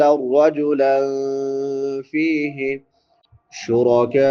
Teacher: کاف کے بعد مد متصل ہے کیونکہ حمزہ اسی کلمہ میں ہے، اس کو تین الف سے لے کے پانچ الف کی مقدار کے برابر لمبا کریں گے